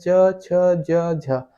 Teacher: आप ये बोल के देखिएगा, च, छ, ज, झ, आपकी जीभ आपके तालू में टकराएगी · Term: च वर्ग